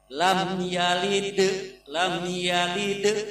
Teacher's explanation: Lam yalid ini ada qalqalah sumro atau qalqalah yang kecil. Jadi harus dipantulkan